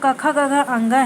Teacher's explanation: कंठ यानी हमारे गले से क्या क्या निकलता है, तो क, ख, ग, घ, अंग है, ये सब गले से निकलता है